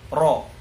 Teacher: tebal itu ketika diucapkan pangkal lidah terangkat sehingga bunyinya tebal